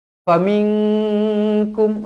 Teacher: nun kosong bertemu dengan kaf, ikhfa hakiki dengung dua harokat. Kum, sekali lagi, izhar syafawi.